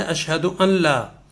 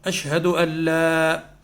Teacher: نون کے اوپر جو سکون ہے، جو نون ساکن ہے، وہ ختم ہو جائے گا. اللہ سیدھے ہم پڑھیں گے اشہد اللہ، چونکہ وہ لام کی ہے تو لام والی جو ہے وہ میں آگے بتا رہا ہوں آپ کو، وہ ہے اس میں بلا غنہ میں آئے گی. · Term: ادغام